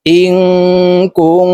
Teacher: নুন সাকিনের পরে ইকফার হরফ কাফ আসছে এই কারণে এই নুনকে নাকের ভিতরে লুকাইয়া গুন্নার সহিত পড়বো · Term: ইকফা গুন্না